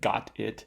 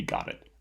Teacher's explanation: this T will generally not be actual alveolar stop in Canadian English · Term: flaps across word boundaries